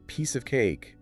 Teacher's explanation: If I say piece of cake at conversational speed, my tongue barely even attempts to form the word of. It completely collapses. · The rhythm of the sentence is dictated by the stressed syllables. The nouns and verbs, the piece, and the cake, they demand your vocal energy. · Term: structural blending